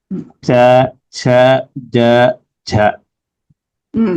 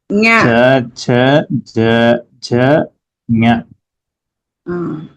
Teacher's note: Your middle part of the tongue is touching the palate region. Upper palate.